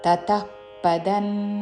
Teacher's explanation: అనుస్వారము తావర్గంలోని అనునాసిక న్ ఉచ్చారణ